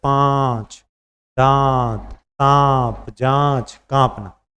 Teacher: अनुनासिक इसमें क्या नाक और मुंह दोनों से हवा निकले